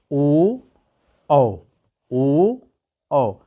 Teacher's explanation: ओ और औ का उच्चारण स्थान कहाँ से होता है, कंठ प्लस ओष्ठ से, मतलब कंठ और ओष्ठ से। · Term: कंठोष्ठ